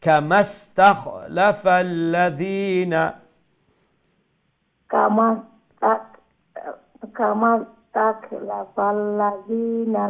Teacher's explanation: এখানে মিম সিনের সাথে জয়েন হয়ে যাবে, লম্বা হবে না।